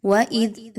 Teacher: ذال کو بہت ہی نرمی کے ساتھ پڑھیے، زا کی طرح نہیں پڑھنا